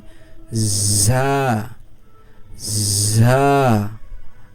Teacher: ঝিরঝির ও নরম আওয়াজে উচ্চারণ হবে